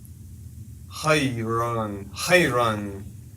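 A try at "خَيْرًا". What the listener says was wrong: You dropped the N.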